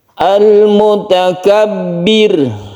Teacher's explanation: Mutakabbir, birnya ini adalah pendek ya, sukun ro, dipendekkan baknya dan ditipiskan atau tarkik. Ini adalah ro yang tarkik, tipis, disebabkan karena sebelumnya ada harokat kasroh.